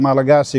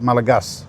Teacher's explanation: swallowing the vowel at the end of a word. Like Malagasy is spelled Malagasy, but they call it Malagas.